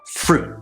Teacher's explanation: So I'm heading toward the T, but then I stop. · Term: cutoff sound